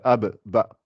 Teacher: les lèvres ça fait ah bah tu te rends compte que si tu colles pas les lèvres tu peux pas dire le bas